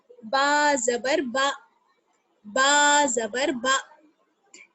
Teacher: با ہے دونوں ہونٹوں کی تری والے حصے سے نکلے گا